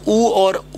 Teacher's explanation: ओष्ठ से उच्चारण स्थान ऊ और ऊ का, ऊ का उच्चारण स्थान होता है वो कौन सा होता है, वो होता है आपका ओष्ठ होता है।